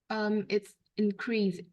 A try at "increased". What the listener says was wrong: So just make it sound like there's a T on the end.